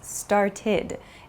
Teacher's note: It has an ID sound. It's not an ED sound, but an ID sound.